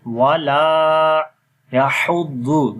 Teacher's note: And in the La there is Alif Madda. Alif is coming after Fatha sign. We long here 1 second.